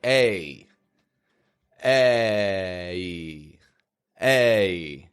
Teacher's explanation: makes a sound like e e like an e and then you bring your jaw up to make this fading ye sound so it comes out like a a two movements are needed